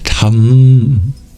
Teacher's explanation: I've turned that syllable ta into one that has an anuswara at the end, tham, turning it into a nasal